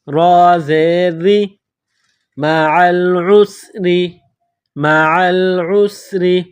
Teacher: را کے نیچے زیر ہے تو را کو باریک پڑھیں گے